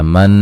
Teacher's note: नून मुशद्दद पे गुन्ना ज़रूरी है, अलिफ मद्दा है।